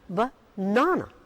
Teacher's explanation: The stress is on na, banana.